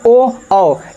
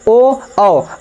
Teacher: जीभ का जो पिछला भाग है वहां से आप स्वर निकाल रहे हैं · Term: पश्च स्वर